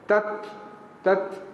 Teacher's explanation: Huruf ta mati deh. Jangan tubik angin kuat sangat.